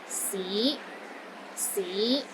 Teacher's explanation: The fifth tone is another rising tone. It starts low, then rises to the middle of your range.